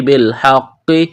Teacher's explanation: قاف میں سختی کریں گے، دبائیں گے، قاف کو موٹا کرنا ہے